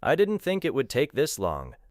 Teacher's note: The words think, take, and long are prominent. The other words are lighter. · Didn't may lose a strongly released final T. It would may connect. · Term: stress